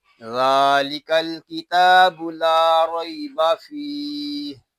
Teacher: ذال کو ہم ایک الف تک کھینچ کر پڑھیں گے، کیونکہ ذال کے اوپر کھڑا زبر آ گیا ہے، اس کو نرمی کے ساتھ ادا کریں گے، کیونکہ ذال جو ہے یہ نرمی کے ساتھ ادا ہوتا ہے۔